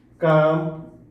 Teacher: ऐसा उच्चारण जे केवल मुंह से होवेला हमरे मन निर्नुनासिक कहिला